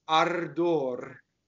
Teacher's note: Both of these roll. The first R rolls because it touches a D. The second R rolls because it is final and the sentence stops in this case.